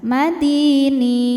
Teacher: Maka huruf nunnya ini panjang boleh dua atau empat atau enam harakat asal konsisten dalam sekali baca. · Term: mad arid lukun, mad arid li sukun